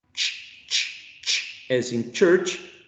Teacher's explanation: you use the center area of the tongue pressed against the hard palate